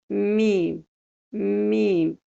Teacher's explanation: So, that is the sound with the lips, but the nose sound is ghunnah sound because the air comes from the nose